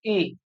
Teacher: तो री वो जब बोल रहे हैं तो वो तालु में भी नहीं टकरा रही, जैसे हम ई बोल रहे हैं ई। तो जीव के जो मध्य भाग है वो लगभग तालु के ऊपर मूवमेंट करने की कोशिश कर रहा है। लेकिन जब हम बोल रहे हैं री, तो ना तो हमारे जीव दांतों में टकरा रही ना तालु में टकरा रही, उन दोनों के बीच में एक जगह है वहां पे टकरा रही री। · जीभ के जो मध्य भाग है वो लगभग तालु के ऊपर मूवमेंट करने की कोशिश कर रहा है।